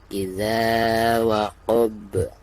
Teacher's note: suara huruf ba-nya harus dipantulkan, bahkan dengan pantulan yang lebih jelas karena posisinya ada di ujung dan dihukumi qalqalah kubro.